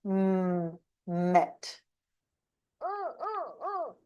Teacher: nasal the air comes out of the nose